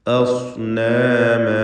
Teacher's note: ഹംസ തർക്കീഖ് ചെയ്യേണ്ട ഇസ്തിഫാലിൻ്റെ അക്ഷരമാണ് ആ, എന്നാൽ ശേഷമുള്ള സ്വാദാകട്ടെ തഫ്ഖീം ചെയ്യേണ്ട ഇസ്തിഅലാഇൻ്റെ അക്ഷരം.